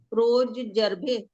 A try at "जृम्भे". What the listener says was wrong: जर्भे नहीं, जृंभे, जृंभे। हाँ, र का उच्चारण ज के, हाँ नीचे।